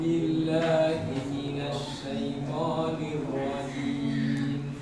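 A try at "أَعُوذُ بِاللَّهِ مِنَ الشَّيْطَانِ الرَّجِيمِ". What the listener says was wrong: B-nya jelaskan i. La sam napa? La-nya tipiskan malah nggih. Shin-nya kurang disebar. Nah, ash, to-nya tebalkan. To.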